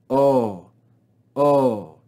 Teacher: the diphthong omega with yota subscript we read just the sound of the omega